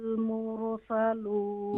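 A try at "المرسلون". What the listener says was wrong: मुर is wrong, यहाँ पर कला नहीं करेंगे, यहाँ कंट्रोल करेंगे। मुरसलून। अच्छा, यहाँ पर देखिए, यहाँ पर सकता है। सकता जानती है सकता क्या होता है? यानी कि सकता का मतलब ये होता है कि आपकी आवाज़ जो है वो रुक जाएगी और सांस जारी रहेगा।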